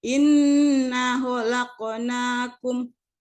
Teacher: inna itu idgham bigunnah, dibaca berdengung, dibaca 2 harkat. Khalaqnakum, terdapat di situ huruf qalqalah.